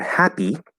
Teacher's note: it's not a y sound it's the E vowel sound